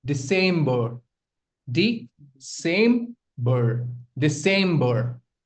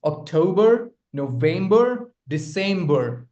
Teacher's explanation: October, November, December. The stress lies on the second syllable.